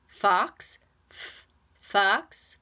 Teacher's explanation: Now, the tongue tip doesn't quite touch that aviola ridge back there, leaving a little bit of space between it and the tongue so that air can move through, but it's just a tiny bit of space that's going to make a little bit of turbulence or friction or a hissing noise as that air comes through. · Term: fricatives